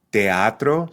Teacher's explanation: So we're separating those two vowels in teatro into distinct syllables, giving the word 3 syllables.